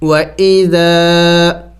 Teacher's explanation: الف مدہ کو ایک الف کا مقدار کھینچنا ہوتا ہے، لمبا کرنا ہوتا ہے